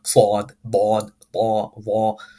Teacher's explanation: I'm slightly over exaggerating the pronunciation so that the microphone picks it up, but you will notice that I'm making the pronunciation of these letters heavy, as if my mouth is full of food or as if I'm an opera singer.